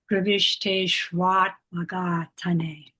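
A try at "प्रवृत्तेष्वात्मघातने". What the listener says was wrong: Okay, what you said made sense, but it's not what you said. Pravishta, which would mean entered, but this is pravrita, which is embarked in.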